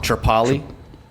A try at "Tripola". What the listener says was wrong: Tripola. Instead of Tripoli, like you said the first time, it's Tripola.